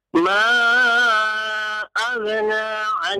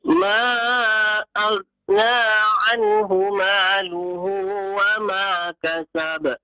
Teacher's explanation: Ghain jangan diqalqalah. Jangan jangan ya. Ghain bukan huruf qalqalah.